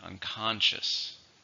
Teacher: 3 syllables, stress is on the second